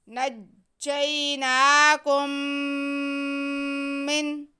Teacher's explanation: نجینا، وَإِذْ نجینا، آگے کاف پہ پیش ہے اور میم ساکن ہے اور ساتھ میں ہی پھر میم مشدد آ رہا ہے، تو ہم کاف کا جو پیش ہے وہ میم مشدد کے ساتھ ملا کے پڑھ لیں گے۔ نجیناکم من، میم مشدد ہونے کی وجہ سے یہاں پہ گنہ ہوگا، اور ویسے بھی میم ساکن کے بعد میم آ رہا ہے تو ادغام کا قاعدہ ہے، ادغام شفوی، تو یہاں پہ گنہ ضرور ہوگا۔